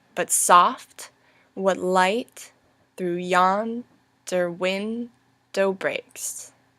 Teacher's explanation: You'll see that this follows the iambic pentameter rhythm